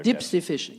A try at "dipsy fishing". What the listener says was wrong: No, you said deep, but Dad would say dipsy fishing. We're going to go dipsy fishing.